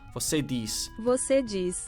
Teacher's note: I think the Z at the end is like, when there's nothing after it, it's like a S sound.